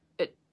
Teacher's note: it is a function we're here so the vowel reduces to a schwa